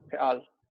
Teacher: That first vowel is shva, so it's a reduced vowel there.